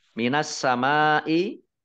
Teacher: Minas samai, alif lamnya alif lam samsiyah karena tidak dibaca, langsung masuk ke huruf berikutnya yaitu sin, ditandai dengan sinnya ada tasdidnya, dibaca double. Mim fathah alif mat tobi'i, tapi karena bertemu dengan huruf hamzah dalam satu kata, as-samai satu kata, maka menjadi mat wajib muttasil. · karena bertemu dengan huruf hamzah dalam satu kata, as-samai satu kata, maka menjadi mat wajib muttasil. Dibaca panjang 5 harokat.